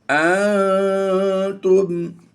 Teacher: نون ساکن کے بعد تا حروف اخفا میں سے ہے، یہاں پر اخفا قاعدہ ہوگا، یعنی آواز کو ہم ناک میں چھپا کر ادا کریں گے۔